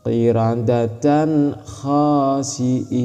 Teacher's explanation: Tanwinnya harus jelas, knya harus jelas. Ketika tanwin mau masuk ke k harus jelas bukan samar ataupun dengung. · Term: idhar